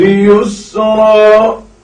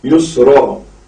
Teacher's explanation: ناظرین گرامی، مع العسر یسرا یہاں پر لکھا ہے، لیکن چونکہ دو زبر پر ہم وقف کر رہے ہیں تو اسے ایک زبر کے ساتھ الف پڑھیں گے، جیسے یسرن سے یسرا۔